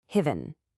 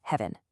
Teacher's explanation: Heaven. The correct sound is actually a short crisp e just like in the word bed.